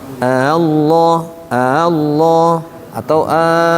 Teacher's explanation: dikiranya e ngasih tahu karena intonasi penting makanya untuk e memisahkan membedakan ini kalimat tanya dipanjangkan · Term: mad farq